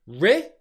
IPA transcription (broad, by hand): rɪ